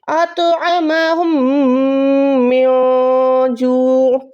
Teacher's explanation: उसके बाद यहाँ पर देखें नून साकिन है, उसके बाद जीम है, तो यहाँ पर इक्फा है। इक्फा में गुन्ने के साथ हमने नून को छुपाना भी होता है। कैसे? अतअमहुम मिन जू', इसको हम मिन नहीं पढ़ सकते, इसको हमें पढ़ना है मिन जू'।